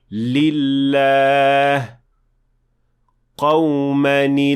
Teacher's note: the honored word is pronounced with a light lam, and that happens when it is preceded by tanween or kasra